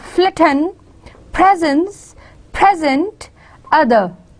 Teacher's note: And same is the case with ordinary, same is the case with flitten, presence, present, other. Yes, the first syllables are stressed and the second syllables are unstressed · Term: unstressed ending